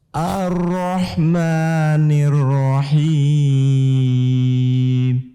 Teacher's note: Ar-Rah bukan ar-Rah tapi Ar-Rahmanirrahim. Kembali ni-nya tipis juga, ro-nya tebal.